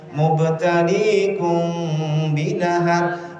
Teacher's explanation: Mimnya tetap ada bu, tapi samar. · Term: ikhfa